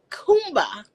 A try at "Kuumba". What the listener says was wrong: If it's 2 words, you have to extend it. Kuumba.